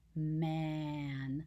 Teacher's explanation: in the word man it's a very nasal sound because of the nasal m and the nasal n